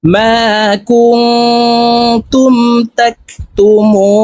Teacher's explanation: এখানে তিন আলিফ টেনে নুনকে সাকিন করে ফেলবো কারণ মদের হরফের বামের হরফে ওয়াকফ হইলে মধ্যে আরজি তিন আলিফ